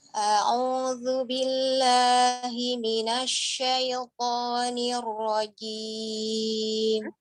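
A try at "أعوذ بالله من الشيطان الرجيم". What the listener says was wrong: Sekali lagi Umi, Hamzah Ainnya dibedakan lagi jelasnya.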